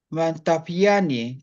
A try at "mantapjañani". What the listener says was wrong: Mantapja. Mantapjañani. Sí, le falta la A. X pronuncia en Aymara como J. No es x como en español.